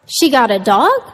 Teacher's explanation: the intonation went way up to indicate surprise